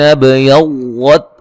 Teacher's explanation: با پہ قلقلہ کریں گے